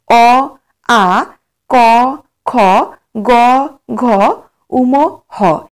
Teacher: এই বর্ণগুলির উচ্চারণ স্থান হলো কণ্ঠ ও জিহভামূল সেইজন্য এই বর্ণগুলিকে বলা হয় কণ্ঠ বর্ণ